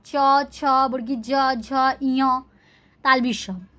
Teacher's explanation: हम लोग का जीभ जो है तालू में जाकर टच करता है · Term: तालव्य ध्वनि